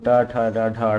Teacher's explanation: ट वर्ग, ये मूर्धन्य ध्वनियाँ हैं